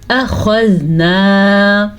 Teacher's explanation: खा को पुर पढ़ेंगे क्योंकि खा हरूफ़े मुस्तालिया में से है